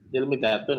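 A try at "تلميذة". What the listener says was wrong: Tilmidatun, masya Allah ya benar.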